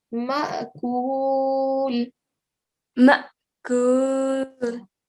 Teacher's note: we are giving like a soft jerking sound. We're not giving a very hard jerking sound. It's just a very soft one.